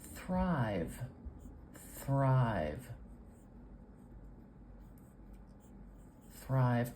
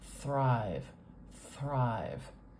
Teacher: it's only spelled one way but for this one f f I'm putting the very tip of my tongue between my top and bottom teeth and I'm pushing the air out in a continuous flow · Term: th sounds